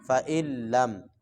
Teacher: نون لکھنے میں تو آئے گا لیکن پڑھنے میں نہیں ہے۔ فَإِن لَّم تَفْعَلُوا، یہاں پہ غنہ بھی نہیں کرنا کہ بندہ کرنا شروع کر دے فَإِن لَّم تفعلوا، یہ غلط ہو جائے گا جی، ٹھیک ہے نا. · حمزہ کو ڈائریکٹ آگے لام کے ساتھ ملانا ہے، نون کے ساتھ نہیں ملانا۔ فَإِن لَّم پڑھیں گے تو یہ غلط ہے، حمزہ کو آگے لام کے ساتھ ملانا ہے۔